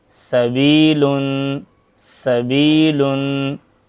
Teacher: सीन की आवाज बारीक और सीटी वाली होती है · سین کی آواز باریک اور سیٹی والی ہوتی ہے